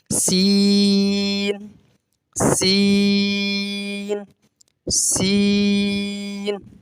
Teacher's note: باریک بھی ہوگا اور سیٹی کے ساتھ بھی ہوگا.